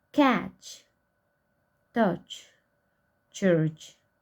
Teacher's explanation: Spelling system of ch, palatal, affricative, and voiceless.